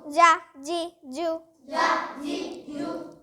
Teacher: সামনের নিচের দাঁতের আগা হতে শীষ সহ পাতলা ভাবে আদায় হবে